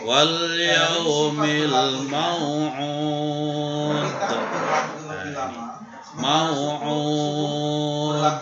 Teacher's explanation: Ada dal harokat kasrah tapi dia dibaca sukun karena wakaf. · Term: qalqalah kubra